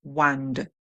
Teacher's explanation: the British English would say wand. So you hear the d sound.